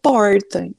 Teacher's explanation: a gente chama de R retroflexo porque a língua dá uma uma volta lá no ela vai lá atrás né o porta língua vai